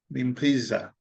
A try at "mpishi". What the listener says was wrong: Mpishi. You're almost having the same weakness for my community where we tend not to put a H. So like shuka, we'll say suka.